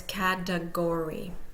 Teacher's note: But for category here, what we're going to see is that the upper slash is above the K, is in front of the K, the first syllable, and the lower slash is in front of the G of the third syllable. So the first syllable is primarily stressed, the third syllable is secondarily stressed. And we'll hear the schwa in the final, in the middle between those two, primary and secondary stressed.